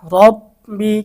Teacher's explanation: এখানে র এর উপর জবর যার কারণে র মোটা